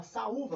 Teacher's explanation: o U está na segunda posição do hiato, o U está na sílaba tônica, o U está sozinho, todas as condições para a gente acentuar.